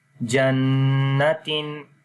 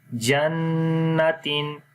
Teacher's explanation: 1 second وہاں پر لمبا بھی کرتے ہیں اور آواز کو ناک کے اندر لے کر جاتے ہیں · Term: غنہ